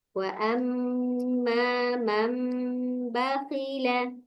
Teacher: jangan lupa yang mim mati, mim tasdidnya dengung ya